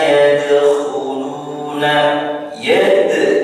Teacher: yad qalqalah sughra, yad memantul membacanya. Yadkhuluna, khuluna, lu mad tabi'i dua ketukan.